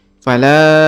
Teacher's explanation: di sini ada ada warna warna hijau ya pada huruf lam maka huruf lamnya kita panjangkan lima harakat